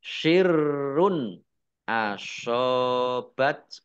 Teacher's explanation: dibaca panjang dua harakat sirrun rnya dibaca dobel ada tasdid nya ro dumah tanwin bertemu dengan huruf alif bacaan izhar dibaca jelas